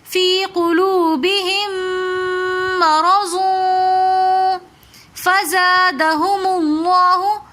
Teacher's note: فی قلوبہم بہم کے اندر ہم ساکن میم کو نہیں پڑھے بلکہ ہا کو ہم میم مشدد کے ساتھ ملا کر پڑھ رہے ہیں اور میم مشدد ہمیشہ غنہ کر کے پڑھا جاتا ہے. رو کے اوپر زبر ہے تو اس لیے ہم رو کو موٹا پڑھیں گے.